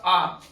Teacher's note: विव्रत स्वर जिसमें मुख पूरे रूप से खुल जाए